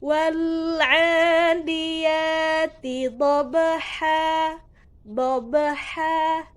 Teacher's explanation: Nah, maka dia termasuk hukum bacaan qalqalah sugro. Cara membacanya dibaca dengan memantulkan dengan pantulan yang kecil atau sedikit.